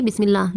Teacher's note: اللہ کے لام کو باریک پڑھنا ہے